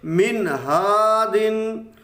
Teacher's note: नून साकिन पे गुन्ना नहीं करेंगे, बल्कि इज़हार करेंगे